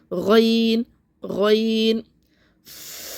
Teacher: جیسے ہم نے خوا پڑھا تھا یہیں سے ادا ہوگا غین. جیسے غرارے ہم کرتے ہیں ایسی آواز آتی ہے